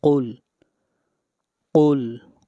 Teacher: قاف قاف پیش لام قل، قل قاف کو موٹا پڑھیں گے، قاف حروف مستعلیہ میں سے ہے۔